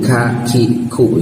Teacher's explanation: lah ka ka itu ada anginnya